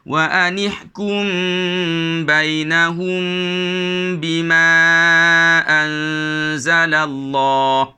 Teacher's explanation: Walaupun namanya adalah ikhfa syafawi, tapi kita tetap juga membunyikan mim mati itu di tepi huruf ba dan disambung terus dengan bunyi ba